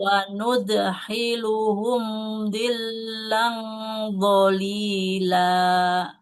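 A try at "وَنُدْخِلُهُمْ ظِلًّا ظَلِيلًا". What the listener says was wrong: Oke, Masya Allah. Alhamdulillah. Barakallah Ibu.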